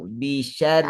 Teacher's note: Nipiskan. Sebab ra tu pada bawah.